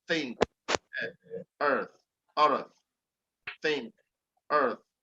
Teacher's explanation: you have your tongue in between both of the upper and your lower teeth, but you allow air to go through your mouth.